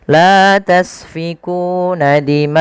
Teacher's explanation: Maka kita lihat ma asalnya 2 harakat di ma akum. Karena bertemu setelahnya hamzah, maka ma-nya menjadi 4 atau 5 harakat. Dan inilah yang kita namakan dengan mad wajib muttasil.